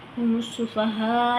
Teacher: मीम को सीन से मिला देंगे, सीन में सीटी होती है, इसको भी हमने अदा करना है।